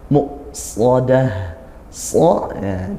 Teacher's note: Muqsadah, so ya, didesiskan dan dia tebal. Muqsadah di akhir tak marbutoh kita baca huruf ha.